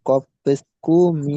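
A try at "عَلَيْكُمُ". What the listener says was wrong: কফ আছে না কাফ আছে?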